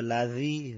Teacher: জাল শব্দটা নরম ভাবে উচ্চারিত হবে জিহ্বার আঘাত উপরের দাঁতের আগের সাথে লাগবে সামান্য বাতাস বাইরে নরম ভাবে উচ্চারিত হবে